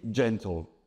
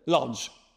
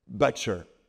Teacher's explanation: l'anglais dit gentle. Et on entend l'afriqué médiéval.